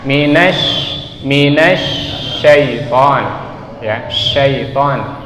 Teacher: huruf shin yang ada titik tiganya itu tempat keluarnya adalah tengah-tengah lidah kita.